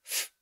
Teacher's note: it's a labial dental fricative made by putting your top teeth against your bottom lip and only partially closing off the passage of air thus causing friction